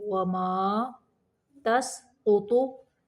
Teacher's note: قاف بھی موٹا پڑھیں گے اور طا کو بھی موٹا پڑھیں گے